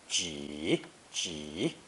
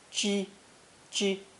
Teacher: It's pronounced either a third tone ji, ji, or first tone ji, ji, with slightly different meanings.